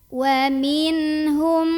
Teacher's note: mim pertama dileburkan atau dimasukkan ke mim kedua. Jadi kita langsung fokus aja ke mim kedua sambil kita tahan dulu bunyi dengungannya. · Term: idgham mimi